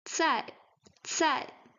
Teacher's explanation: We can see here that there is an H because some air is going out from our mouth when pronouncing cai, cai. So we have with the fourth tone, cai, cai, vegetable, dish.